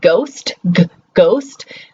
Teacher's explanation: You never give it an H sound, right? You never go, you're like, g.